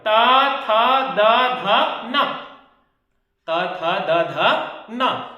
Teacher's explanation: दांत से उसका उच्चारण होता है किसका, ता वर्ग का